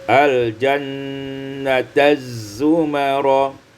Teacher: idghamut ta fi zai, diidghamkan ta pada zai menjadi al-jannataz zumara